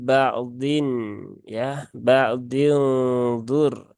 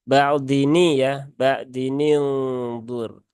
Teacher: Nun di tanwin pada huruf dotnya diharokati kasroh menjadi ba'din ya, ba'din dur ya, begitu ya, ba'dini ya, ba'dini dur. Jadi kasroh tanwinnya berubah menjadi nun biasa